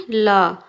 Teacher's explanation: होते हैं जिनके उच्चारण में जीव तालू को छूती है और हवा मुंह के दोनों बगल से निकलती है · हिंदी में ल एकमात्र पार्श्विक व्यंजन है